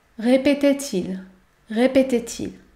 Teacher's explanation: lire est ce que tu sais lire oui voyons voyons répétait-il la liaison est obligatoire entre le verbe et le pronom répétait-il répétait-il je relis la surprise lui coupa la parole un